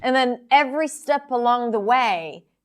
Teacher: And then reduced. Every step. Stressed. Along the way. Stressed.